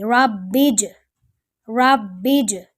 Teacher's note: یہاں دیکھیے جیم کے اوپر زبر نہیں ہے بلکہ سکون ہے، با کو جیم کے ساتھ ملائیں گے اور جیم کیونکہ کلکلا حروف میں سے ہے تو یہاں اس کے اوپر موومنٹ ہوگی، ربج ایسے پڑھا جائے گا، جس کی وجہ سے محسوس ایسا ہوتا ہے کہ شاید جا نہیں جا ہے، لیکن جا نہیں ہے، ٹھیک ہے۔